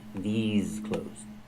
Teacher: The pronunciation these has the long e like green beans and the z sound like in zebra with vibration